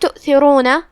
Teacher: کلمت تؤثرون یہاں حرف تا ہے. ہم تا کو زبان کے سر اور اوپر والے دانتوں کے اندرونی کناروں سے پڑھیں گے. تا حروف اللثویہ میں سے ہے تو اس کا دھیان رہے.